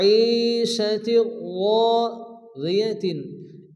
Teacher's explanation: এখানে রা কি হবে? পুরো করে মোটা করে পড়তে হবে। এখানেও এক আলিফ পরিমাণ টান দিয়ে পড়তে হবে।